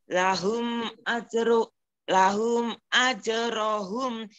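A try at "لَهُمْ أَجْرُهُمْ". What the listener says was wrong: Ya, jangan ajro, ajru.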